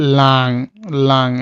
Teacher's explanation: এনজি যেটা হলো আপনার একটু নাক থেকে আসে